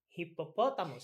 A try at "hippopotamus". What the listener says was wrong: You are right.